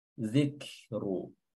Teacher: jadi suaranya dulu yang tertahan, yang syiddah ya, lalu hamsnya keluar.